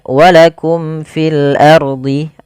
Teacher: Fil ardi, di sini ada alif lam. Alif lamnya kita namakan alif lam qamariyah, yaitu alif dan lam kita tulis dan dibaca dengan jelas. Kemudian ardi, ro-nya di sini ada hukum tajwid berupa ro tafkhim.